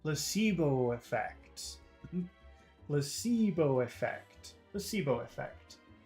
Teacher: when you say the words together the the O from Placebo and the E from effect combine so actually it just becomes one very long vowel sound Placebo fact so I think everything becomes long except for PL